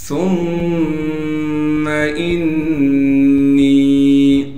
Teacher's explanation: سا کو نرم کر کے باریک کر کے پڑھیں گے، پھر سا کو میم سے ملائیں گے اس لیے کہ میم پر تشدید ہے۔